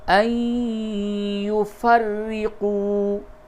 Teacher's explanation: نون ساکن کے بعد یا ہے، ادغام مع الغنہ ہوگا، اور را مشدد پہ زیر ہے، اسے باریک پڑھیں گے